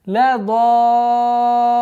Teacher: Здесь у нас обязательно словесная долгота в размере 6 огласовок. Удлиняем вот фатху в размере 6 огласовок. И в конце, естественно, маленький тембр.